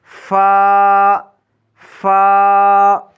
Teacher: ادا کرتے وقت نچلے ہونٹ کا تری والا حصہ اوپر والے سامنے کے دو دانتوں سے لگائیں گے